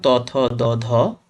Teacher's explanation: ওকে, এরপর দেখো দন্ত, দন্ত ব্যঞ্জন। যেসব ব্যঞ্জন ধ্বনি উচ্চারণের সময় জীবের ডগা উপরের পাটি দাঁতে লেগে, কোথায় লেগে? উপরের পাটি দাঁতে লেগে বায়ুপথে বাধা সৃষ্টি করে